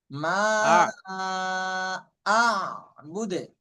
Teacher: প্রথম দিয়ে একদম মোটা হবে না, শেষের দিকে মোটা হবে।